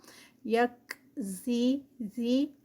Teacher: کاف جو ہے وہ اس پہ ہے جزم ہے تو اس پہ ہمس ہوگا، یک زی اور یہ جو ہے وہ اس کو نرمی سے زیبون، اور یہ بون جو ہے یہ 4 کاؤنٹس پہ اسٹریچ ہوگا کیونکہ یہاں پر واو مدہ سٹاپ پہ ہے.